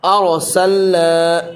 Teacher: تینوں کے قاعدے سمجھ لو۔ ارسلنا، یہاں پر را ساکن سے پہلے زبر ہے تو را پور ہوگی